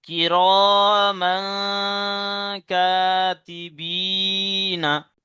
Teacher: তাই তানবিনকে, তানবিনের আওয়াজকে নাকে ছুপে এক আলি পরিমাণ গণনা করে পড়তে হবে। তানবিনের আওয়াজকে নাকে তুলে এক আলি পরিমাণ গণনা করে পড়তে হবে।